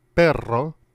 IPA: pεro